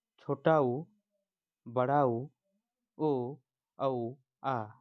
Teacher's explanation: ये मुंह के पिछले स्तर से उच्चारित हो रहे हैं या पिछले भाग से उच्चारित हो रहे हैं। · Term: पश्चस्वर